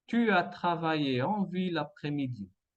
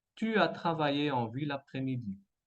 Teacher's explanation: enchaînement consonantique entre la L et la A de l'après-midi